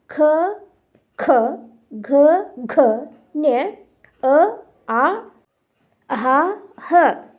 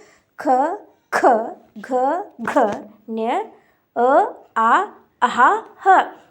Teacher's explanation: ಇವು ಕಂಠದಿಂದ ಉಚ್ಚಾರಣೆ ಆಗ್ತಕ್ಕಂತ ಅಕ್ಷರಗಳು